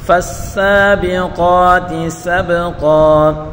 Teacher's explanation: فا کو سین کے ساتھ ملا کر پڑھیں گے اور سین کو ایک الف کی مقدار کھینچ کر پڑھیں گے